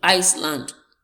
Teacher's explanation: So ice carries the stress. The first word, ice, carry the stress.